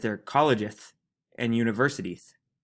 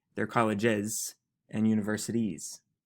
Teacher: You're giving me a TH sound instead of a nice clear S.